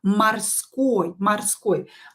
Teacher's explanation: O is in a weak position here because we don't know, should we write O, should we write A, да, because we pronounce it as A.